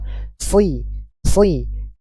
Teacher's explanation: ketika kasrah pun pangkal lidah tetap naik ya Sehingga suaranya tetap naik tebal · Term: Shad